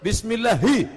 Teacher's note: Letakkan jari di dada, ada getarnya. Ada getarnya. Kalau tidak ada getarnya, ha kecil.